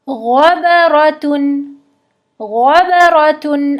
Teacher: غین اور خا میں استعلاء ہوتا ہے، یعنی کہ یہ حروف مستعلیہ میں سے ہیں، موٹے حروف ہیں، اردو میں ہم ان کو اتنا موٹا نہیں پڑھتے۔